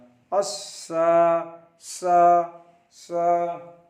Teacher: स is pronounced from the tip of the tongue and the inner edges of both front upper teeth. सा जबान की नोक जब दोनों दांतों के अंदरूनी किनारे से टच होगा तो सा को उच्चारण होगा।